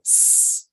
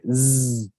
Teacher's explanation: if I were to say S, and place my fingers on my throat, you will see that there is no vibration happening when I say S. If I would say Z, then you will feel the vibration happening.